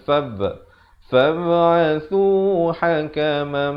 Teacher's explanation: Fab'athu di sini khalkhalah. Dia ada pantulan